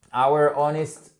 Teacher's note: on ne prononce pas le H